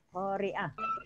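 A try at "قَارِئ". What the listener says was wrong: Qori. Nggak usah pakai kan nggak ada. Nggak ada ahnya di situ kan? Qori gitu ya. Qofnya ada, ro-nya ada, hamzahnya juga ada. Di keduanya ada alif. Lalu bacaannya jadinya panjang, qori gitu ya. Qoro'a, qori.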